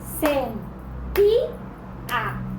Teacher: La sílaba tónica es ti y lleva tilde. Y si a mí la regla ortográfica me dice que las graves no se acentúan cuando terminan en vocal.